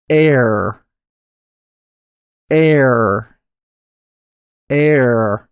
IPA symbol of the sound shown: ɛr